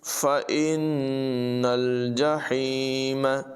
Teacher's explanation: نون مشدد میں غنہ ہوگا اور نون کو لام سے ملائیں گے، ہا کی آواز نمایاں کریں گے۔